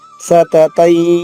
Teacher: పక్కన అరసన్న ఉన్న అక్షరాన్ని సాను నాసిక అంటారు. ముక్కు సహాయంతో పలకాలి. సతతై అన్నప్పుడు మీకు ఈ అన్నప్పుడు ముక్కు నుంచి కూడా, నోటితో పాటు ముక్కు నుంచి కూడా కొంత బాగా ఆలుస్తుంది.